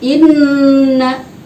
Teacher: Lahum, inna di situ hukumnya gunna musyaddada. Nun sukun ada tasydid, gunna musyaddada ditahan satu alif dua harokat.